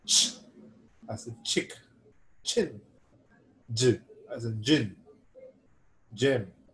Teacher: the active articulator is removed slowly from the passive articulator and the air escapes with slight friction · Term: affricates